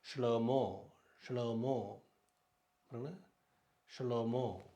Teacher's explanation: ஹே, இது அவ்வளோ உச்சரிக்கப்படாது. ஹே கடைசியில் வந்தால் உச்சரிக்கப்படாது